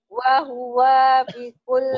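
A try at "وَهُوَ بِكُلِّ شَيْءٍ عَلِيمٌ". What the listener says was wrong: Wahuwa pendek. Wahuwa. Wahuwa bikul. Wahuwa bikul.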